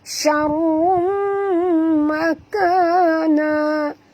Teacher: Okey, rum di sini kita nampak tanwin baris dua hadapan bertemu dengan mim. Maka kita kena masukkan bunyi tanwin ini terus ke dalam mim disertai dengan dengung. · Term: idgham al-ghunna